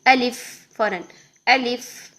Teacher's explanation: الف، الف کو جب ہم نے پڑھنا ہے تو آلیف ایسے نہیں پڑھنا، الیف ایسے بھی نہیں پڑھنا، لمبا نہیں کرنا بیچ میں کسی کو بھی، الف فوراً